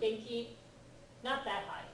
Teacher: genki is kind of high and flat.